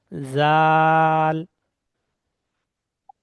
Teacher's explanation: জাল বলার সময় জিভের আগা উপরের দাঁতের আগা মিলবে।